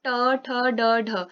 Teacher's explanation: ट ठ ड ढ बोलने में हमारी जो जिह्वा है वो जिस स्थान को टच कर रही है उसको बोलते हैं हम मूर्धा या मूर्धन्य। मतलब हमारी जो जिह्वा के ठीक ऊपर वाला भाग है उसको हम बोलते हैं मूर्धा।